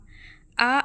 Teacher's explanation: आप उच्चारण करके देखिए ऐसे लगेगा कि मुंह हमारा पूरा खुला है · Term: विवृत स्वर